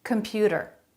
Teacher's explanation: they're all saying that with a flap comput a flap instead of a t sound